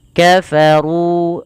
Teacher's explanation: ru-nya tebal karena dia di sini ra berharakat dhammah dan kita namakan dengan ra tafkhim